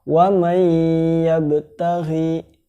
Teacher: nun matinya dileburkan atau dicampurkan ke huruf setelahnya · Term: idgham bihunah